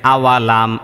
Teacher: এটা হলো মিম সাকিনের ইজহার, বাও নেই মিমও নেই, এজন্য এটাকে স্পষ্ট করে পড়তে হবে।